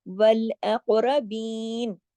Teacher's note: یہاں پہ قلقلہ ہوگا، قاف کو موٹا پڑھا جائے گا، را بھی موٹا پڑھا جائے گا